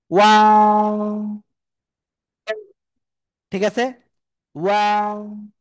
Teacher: শুরুতে গোল হবে, মাঝখানে দুই দিকে প্রসারিত হবে, আবার শেষে এসে গোল হবে।